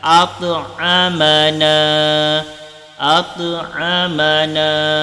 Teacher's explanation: yang mana ta ini makhrajnya berasal daripada lisan. Jadi lisan, tapi dia mempunyai sifat yang agak berat. Jadi lisan, ujung lidah berada di gigi depan bagian atas.